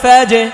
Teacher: জি আশা করছি পেরেছেন, কারণ হচ্ছে আমি আবার বলে দিচ্ছি যে জিম হচ্ছে কলকলার হরফ, জিম কলকলার হরফের মধ্যে এই জজম আসছে, কলকলার হরফে যদি জজম আসে তাহলে এটা কলকলা করে পড়তে হয়, অর্থাৎ পাল্টা আওয়াজ দিয়ে ধাক্কা দিয়ে পড়তে হয়